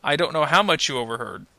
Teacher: you can kind of hear that my voice trails trails off a little bit, goes down a little bit. · So in this case, if you listen to it, I don't know how much you overheard. You can kind of hear that my voice trails off a little bit, goes down a little bit. So in this case, we can recognize it's not a question, it's most likely a response.